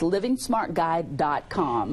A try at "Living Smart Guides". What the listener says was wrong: And it's actually Living Smart Guides, just to get to GUIDES.com. Living Smart Guides. it's an S at the end of guides.